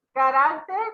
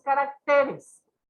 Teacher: En singular tenemos en la sílaba de RA y en el plural se movió esa sílaba tónica a la TE